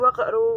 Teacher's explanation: disebut dengan bacaan qalqalah sughroh karena ada qaf mati asli